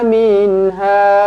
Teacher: min matikan dengan jelas, izhar halqi, minha panjang 4 ataupun 5 harakat, ada ombak rindu.